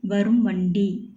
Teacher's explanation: மகர ஈற்று சொல்லுக்கு அப்புறம் வருமொழி வகர எழுத்தாக இருந்ததுன்னா அந்த மகரம் நிலைமொழியில் உள்ள மகரம் குறைந்து ஒலிக்கும் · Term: மகர குறுக்கம்